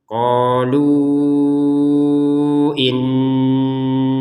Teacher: Nah, berhenti dua harakat akan panjang lima harakat kalau gabung dengan hamzahnya ini